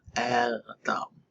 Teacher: that's the glottal stop with an ending. So you have to say it in the back of your throat.